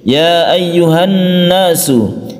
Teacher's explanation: nasu Ya ayyuha aslinya Ha ini adalah Mad Thobi'i akan tetapi kalau Mad Thobi'i itu bertemu dengan Al bertemu dengan Al maka Mad Thobi'i nya itu tidak dibaca panjang tapi dilangsungkan ke sukun lam